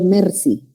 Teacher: Esa R, yo la estoy adecuando a mi lengua materna. Nuestra R es alveolar.